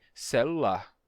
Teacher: eu só Segurei o l por mais tempo e disse celular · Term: consoante geminada